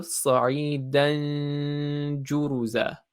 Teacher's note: because noon is naturally nasal, it will come out of both your nose and your mouth. Because it's not a full noon, it'll come out of your mouth as well. · So it's almost in the position of jim, almost like you can feel the vibration when you do the stretch. And then you're just holding the noon sukoon sound, but because it's not a full noon, it won't sound like a full noon. It'll be a bit hidden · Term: ikhfa